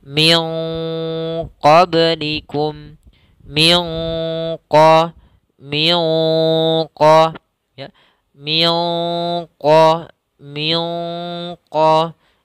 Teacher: menyamarkan suara nun kepada huruf qaf. Maka tidak dibaca min qablikum, tapi disamarkan ke qaf seakan-akan terbunyi dengan suara ang. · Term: ikhfa